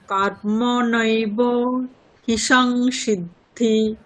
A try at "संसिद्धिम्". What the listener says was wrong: संसिद्धिम् মকার পর্যন্ত